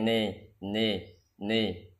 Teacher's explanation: Nun kasrahnya diucapkan antara kasrah dan fathah artinya terbaca imalah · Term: imalah mereng